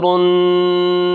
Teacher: را کو ہم کیا کریں گے، موٹا کر کے پڑھیں گے، کیونکہ را کے اوپر کیا ہے، پیش ہے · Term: را موٹی